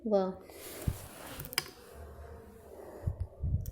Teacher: दंतोष्ठ इनका उच्चारण दांत और ओठ की सहायता से होता है